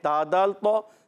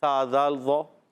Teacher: تا دال طا میں جڑ ہے اوپر کے دانتوں کی جڑ، اور سا دال ظا میں اوپر دانتوں کے کنارے ہیں